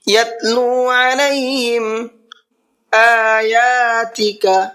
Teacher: حمزہ کو بھی کھینچنا ہے اور یا کو بھی کھینچنا ہے، اس لیے کہ دونوں کے اوپر کھڑا زبر ہے